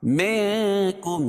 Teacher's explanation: یہاں بھی اخفاء حقیقی کیونکہ نون ساکن کے بعد حروف اخفاء کے 15 حرفوں میں سے کاف ہے